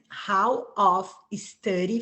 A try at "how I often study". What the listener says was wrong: So the only thing I would say is you cut off often. How I often study. Study. Often study. It's the way that you say the first S. Study, story, right? There's something before it that sounds like a eh.